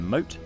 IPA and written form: məʊt (Moat)